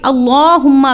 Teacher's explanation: اللہم میں اللہ کے لام کو پر پڑھا جائے گا، جبکہ کھڑی زبر کی مقدار کو پورا کریں گی